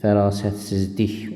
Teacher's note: Fərasət siz başqa bir dəyişiklik yoxdur. Şəkilçi hissəsində isə l-dan sonra gəldiyinə görə d kimi tələffüz olunacaq.